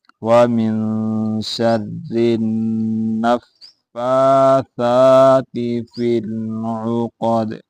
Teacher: وَمِن شَرِّ النَّفَّاثَاتِ فِي الْعُقَدِ، قاف کو موٹا کرنا ہے، دال کے اوپر قلقلہ کرنا ہے کیونکہ یہ حروف قلقلہ میں سے ہے